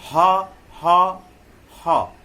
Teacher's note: कंठ से, ये कंठ से निकलता है, स्वर यंत्र से निकलता है।